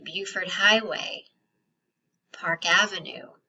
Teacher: So that means any other type of road, not street, but all of the other types of roads. We're going to stress the type of road, not the first word. Okay, so remember, everything now that we're seeing is second word stress.